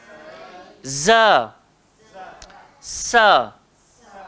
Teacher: Huruf Zai dengan huruf Sin, tempat keluar dia sama. Hujung lidah, langgar belakang gigi.